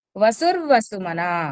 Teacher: ఉంది చూడండి వసుర్వసుమనా సత్య యక్చువల్గా అక్కడ కూడా వసుహు వసుమన వసుహు ఉండాలి వ ముందు వచ్చిన విసర్గ ఇర్ అయిపోయింది